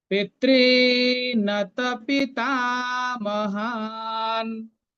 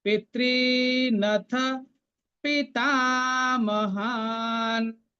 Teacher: পিতৃ, আমরা রি তো লিখি না, একটা উচ্চারণ হয় এককাল, রিটা হচ্ছে দুই কাল উচ্চারণ হয়, সেজন্য পিতৃ এটা হচ্ছে দীর্ঘ রি। পিতৃনথ পিতামহান, শেষের নটা অর্ধেক।